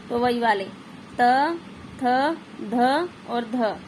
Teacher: जो किनारा उसको छू रही है हमारी जीवा यानी कि जो जीवा का बिल्कुल आगे नोक वाला भाग है वह हमारे दांतों के सिरों को छू रहा होता है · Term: दंत वर्ण